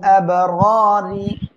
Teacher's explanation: লাফি ইল্লিয়িন দেখেন, কাল্লা তিন আলিফ টান হবে, ইন্না এখানে ওয়াজিব গুন্না হবে, কিতা এক আলিফ টান, বাল আব এখানে কি হবে, কলকলা হবে, র এক আলিফ টান হবে, আর র অক্ষর মোটা হবে, আর এখানে রি, র নিচে জের চিকন করে পড়বো